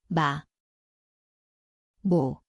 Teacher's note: 미음, See kõlab nagu koht on mõlemad huuled, nina